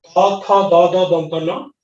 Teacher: দুই প্রান্তের দাঁতের দুই প্রান্তের সাথে স্পর্শ ঘর্ষণ কিংবা ধাক্কা লেগে বের হয় বলে এটাকে বলা হয় দন্তধ্বনি